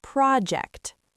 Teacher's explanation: Also remember that project as a noun has the stress on the first syllable.